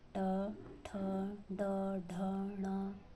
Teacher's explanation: मूर्धन्य व्यंजन वे हैं जिनके उच्चारण में जीभा मूर्धा को स्पर्श करती है, मूर्धन्य व्यंजन कहलाते हैं। जैसे ट वर्ग पूरा है आपका, ट, ठ, ड, ढ, ण।